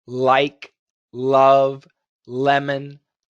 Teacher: it's a very strong l sound and the teeth are slightly biting the tongue